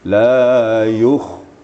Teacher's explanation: Kha yang sukun harus ada penekanan supaya keluar sifatnya